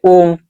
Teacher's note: लेकिन हमने यहाँ पे लगाया इसके आगे 3, तो हम लोग का जो दीर्घ वाला स्वर है ना वो क्या है, दीर्घ स्वर, इसको थोड़ा सा और खींच के बोलेंगे। जैसे ओ बोलते हैं उसी को थोड़ा सा और लंबा समय देके बोलेंगे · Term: प्लुत स्वर